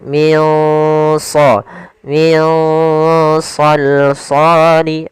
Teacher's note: shad termasuk huruf yang tebal dan huruf isti'la, maka dia samarkannya agak ditebalkan.